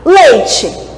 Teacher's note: Bom, então, se a gente tem primeiro uma vogal e depois uma semivogal, a gente tem um som mais forte, indo para um som mais fraco, beleza? O E mais forte e o I mais fraco. Então, a gente tem um som decrescente. Então, isso aqui é um ditongo decrescente.